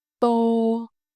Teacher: To make the Vietnamese tờ sound, the tip of your tongue press against the back of your upper front teeth and then release, but you hold the air back. The sound is sharp and clean.